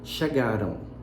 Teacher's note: Então, o que acontece aí no final dessa palavra? Aparece um O, só que com som de U. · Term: glide